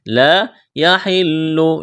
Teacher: الف مدہ ہے، لا یحل، لام میں سختی کریں گے